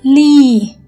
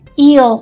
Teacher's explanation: Với clear l thì chỉ có đầu lưỡi đưa lên đụng chân răng, alveolar. Nhưng mà với dark l thì ngoài cái vị trí tiếp xúc chính ở đây, chúng ta còn có phần cuốn lưỡi đưa lên gần với ngay cái chỗ velum